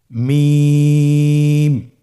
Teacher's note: 2 ঠোঁট চেপে ধরে আমরা উচ্চারণ করব মিম।